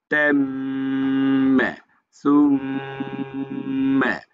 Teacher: মিম তো দুই ঠোঁট মিলে যাবে